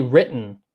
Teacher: he's saying written but i don't hear a t